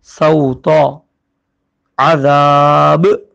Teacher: جزم آ گیا رکنے کی وجہ سے تو با پہ کلکلا ہوا